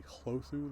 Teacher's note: H has not disappeared before L's and R's